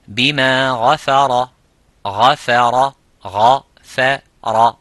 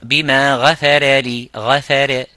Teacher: Bima gha, it's mufakham, which is full mouth. Fa is muraqqaq, which is empty mouth. Ra, it is mufakham. So you would be saying bima ghafara, ghafara, ghafara, instead of saying ghafa, ghafara, bima ghafara.